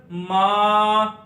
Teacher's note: الرحمن الرحیم۔ اس کے بعد میم کے اوپر ہے کھڑی زبر، کھڑی زبر کو ایک الف اتنا لمبا کریں گے ، میم کھڑی زبر ما، لام اور کاف کے نیچے زیر